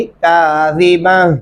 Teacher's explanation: ज़ाल को नरमी से अदा करेंगे और बा को ता के साथ मिलाने से, वक़फ़ करने से ये ता हा में बदल जाएगा।